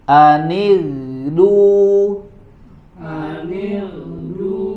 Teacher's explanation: Nah, di sini dalam keadaan yang kedua, yaitu huruf ghain sukun sebelumnya kasroh, maka dia dibaca dengan tipis pada huruf ghain ini